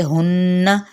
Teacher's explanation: ہن غنہ کرتے ہوئے اس کی حرکت کو لمبا نہیں کریں گے